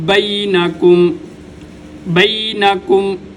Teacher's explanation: بَيْنَكُمْ کو ادا کرتے ہوئے کاف کو باریک پڑھا جائے گا، کاف کو موٹا نہیں پڑھا جائے گا